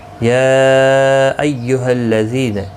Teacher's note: یا مد منفصل ہے، 3 الف کی مقدار کے برابر کھینچ کر پڑھیں گے